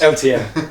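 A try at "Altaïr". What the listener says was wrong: Altair. I don't know why you're adding all these different weird syllables. Altair. Altair. Altair.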